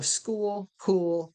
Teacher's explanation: the air is completely stopped at the point of articulation which is back in the mouth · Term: K-ike sounds